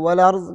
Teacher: نقل حرکت یعنی حمزہ کا حرکت ماقبل لام ساکن کو دے دیتے ہیں اور حمزہ کو حذف کرتے ہیں